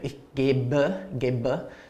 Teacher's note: It becomes an E ending, which is pronounced like a schwa. For example, I give, ich gebe, so it's an ending.